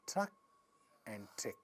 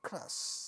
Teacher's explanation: again we see c c v c so when we see there is a cluster and still we see the first sound getting aspirated because the second sound in a cluster is a raw sound